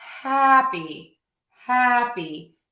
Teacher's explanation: my e is shorter softer and lower in Pitch